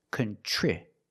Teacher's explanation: Then for the second syllable, we have TR, and TR makes the ch sound like chicken, plus the R together, contri. The I after TR is a short I, so we make the sound I like this is.